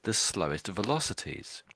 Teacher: I gave a little bit of extra emphasis to the word slowest velocities when I said it because that's that's the sort of peculiarity because they're sort of saying highest and then slowest is that sort of comparison there they're making.